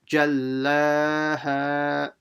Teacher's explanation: So the lam and the ha will be stretched the same amount, so don't stretch one longer than the other.